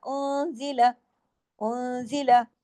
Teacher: نون ساکن ہے، اس کے بعد زائی ہے، زا ہے، اس میں اخفا حقیقی غنہ کاملہ